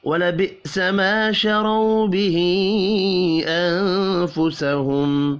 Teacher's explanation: وَلَبِئْسَ مَا شَرَوْا بِهِ أَنفُسَهُمْ الف مدہ کو 1 الف کے برابر کھینچ کر پڑھیں گے، شرو را پر پڑھا جائے گا اور رو واو لین ہے، ہا کے اوپر چھوٹی مد ہے، 3 الف کے برابر کھینچ کر پڑھیں گے، نون ساکن کے بعد فا ہے، اخفاء حقیقی ہوگا اور یہاں پر اظہار شفی ہوگا، غنہ نہیں ہوگا۔